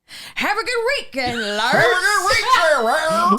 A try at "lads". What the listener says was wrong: Why are you saying lords? Why are you putting an R in there? Lads. Not lards.